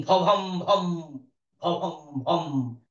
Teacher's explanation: এই যে মহাপ্রাণ করছি আমি এখানে বাতাস বেশি আছে